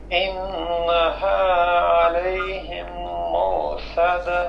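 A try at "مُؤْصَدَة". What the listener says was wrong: مو نہیں پڑھنا، مؤصدہ، یہ غلط ہو گیا. مؤصدہ، مؤصدہ، ٹھیک ہے، کیسے؟ مؤصدہ.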